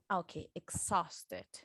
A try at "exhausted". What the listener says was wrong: Yes, do not pronounce the U. Exhausted.